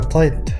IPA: tˤet